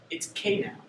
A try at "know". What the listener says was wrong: It's pronounced no. Sometimes we don't say the first letter because it's silent.